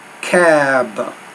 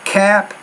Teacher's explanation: make the vowel longer before the B consonant make the vowel sound a little bit shorter before the P